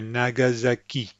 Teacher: notice that the S sounds like a z as will all S's that are between two vowel sounds · The ki is where the emphasis is.